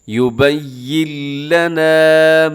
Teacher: یہاں نون کی آواز کو بالکل ختم کر دیں گے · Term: ادغام بغیر غننے